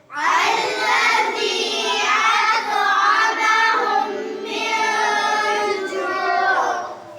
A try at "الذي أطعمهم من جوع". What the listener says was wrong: देखो, यहाँ था की आवाज नहीं आई।